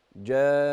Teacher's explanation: النون المشددة في جان لما تقفي عليها لازم تقفي عليها بالغنة. جان.